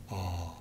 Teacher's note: the tongue is back and the lips are not rounded, but more open